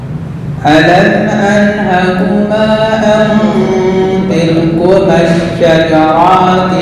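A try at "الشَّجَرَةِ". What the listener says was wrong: شَجَرَاتِ رأيه pendek.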